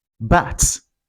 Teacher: The next sound, this is a voiced consonant and it's pronounced b.